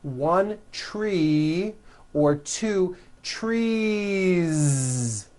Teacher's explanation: you continue the voicing throughout the whole word and add on a voiced Z